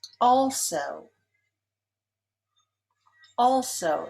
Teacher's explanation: Also is stressed on the first syllable.